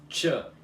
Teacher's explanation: o que você precisa pronunciar aqui é o som chiado do T, que é assim, tch.